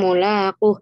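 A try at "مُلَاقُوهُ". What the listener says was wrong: Bukan mulaquh. Itu ada matnya ya, mulaquh.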